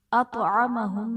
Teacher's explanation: اطعمہم میں حرف مستعلیہ ہے، پر پڑھا جائے گا، اور طا حرف قلقلہ بھی ہے، تو یہاں پر قلقلہ حرف ساکن ہے، تو یہاں پر ہم قلقلہ خوب ظاہر کر کے پڑھیں گے۔